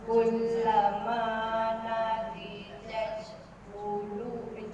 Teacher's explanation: Di jangan panjang, satu harakat.